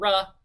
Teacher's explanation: you don't release any air out of your nasal cavity when you say the sound raw